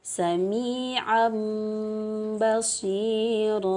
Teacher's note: suara nun sukun atau tanwinnya ditukar menjadi suara mim. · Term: iqlab